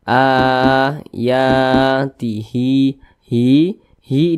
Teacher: panjangnya dua harakat atau kira-kira dua ketukan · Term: Mad Thobi'i